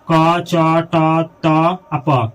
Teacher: ऐसा वर्ण जिसके उच्चारण में कम हवा निकले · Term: अल्पप्राण